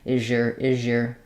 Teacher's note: you just don't want the sh sound the voiceless sh because that would um stand out as is being devoiced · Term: z